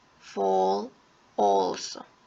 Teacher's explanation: the lips are like more rounded or more like in a oval shape